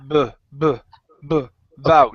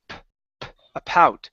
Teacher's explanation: the difference between the B and the p is that the B is voiced